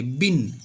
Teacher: जैसे ही आप ब बोलेंगे बिन आपके दोनों ओठ आपस में चिपक जाएंगे · ब बोलने पर दोनों ओठ लगते हैं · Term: ओष्ठ व्य, ओष्ठव्य